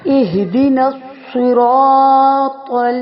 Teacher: را بھی موٹا کیونکہ اس کے اوپر زبر ہے، الف بھی موٹا کیونکہ موٹے حروف سے کے بعد اگر الف آئے تو موٹا، باریک حروف کے بعد اگر الف آئے تو باریک.